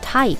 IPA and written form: taɪp (type)